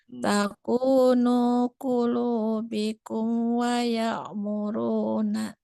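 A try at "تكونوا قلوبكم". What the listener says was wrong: Ini hati-hati, bunyi amnya kurang jelas. Bikum wa ya gitu ya. Langsung kan. Takunu qulubikum wa ya'muruna.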